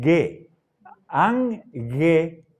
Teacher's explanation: el sonido de la gamma nunca es fuerte. No es como en Gerardo